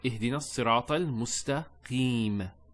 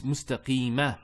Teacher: There's a fatha there, but we don't pronounce that fatha when we stop. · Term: sukoon